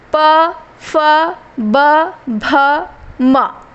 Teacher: बिना ओठ चिपकाए आप इनका उच्चारण नहीं कर सकते हैं। तो इनमें ओठ, इसीलिए इसको ओष्ठ व्यंजन कहा जाता है। · प वर्ग का उच्चारण ओठ से होता है।